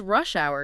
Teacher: peak commute times, compound noun, stress on rush.